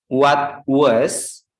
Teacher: T plus consonant itu ditahan